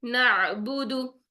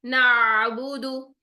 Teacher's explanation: जब हम आइन साकिन को अदा करेंगे तो पिछले हर्फ की हरकत आपकी लंबी नहीं होनी चाहिए। पिछले हर्फ की हरकत आपकी लंबी कैसे होगी, कि जब आप करेंगे नाबुदु, नहीं, ये नहीं करना है आपने, ठीक है। · अब पीछे नून के ऊपर जबर है, ठीक है, तो नून की जबर को आपने अदा किया, और नून की जबर अदा करने के आपने फौरन बाद आइन साकिन में चले जाना है, ठीक है। आइन साकिन में फौरन जाएंगे, जिसकी वजह से हमारा नून जो है वो लंबा नहीं होगा